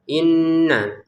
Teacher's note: Nun bertasdid ini wajib didengungkan ya. Inna 2 harokat saja. inna, jangan berlebihan, jangan kekurangan ya.